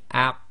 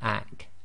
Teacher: The only one, or the only difference, is the qaf is tafkhim, and you have that blocking of the throat, which is very important.